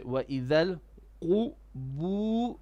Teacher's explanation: the ba, although it has a dhamma, but we don't make it heavy